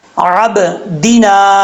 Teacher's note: دال سے دی ہوتا ہے، دے نہیں ہوتا